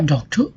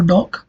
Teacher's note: you have given a relative extra amount of energy for doc and the less energy for ter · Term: stress